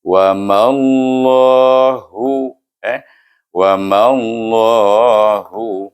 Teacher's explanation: Oleh kerana dia bertemu dengan nama Allah, kita idghamkan mim ini dengan huruf lam di sana.